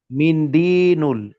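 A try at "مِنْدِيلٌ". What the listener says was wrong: দিনুল না, দি লুন। মিন্দিলুন।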